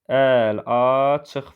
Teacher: Əl, açıq formasına tələffüz olunacaq. Burada Y artırılmır, tam tərsi I, A saitlərindən I düşür. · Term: səs düşümü